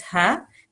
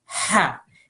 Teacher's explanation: So it comes from the middle of the throat